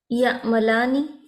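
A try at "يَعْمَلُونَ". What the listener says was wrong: या अमलूना, आइन आइन निकलेगा ना, झटका नहीं देंगे बस, या अमलूना, नेक्स्ट।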